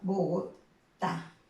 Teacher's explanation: En el caso de Bogotá, ¿dónde está la mayor fuerza de voz? En la última sílaba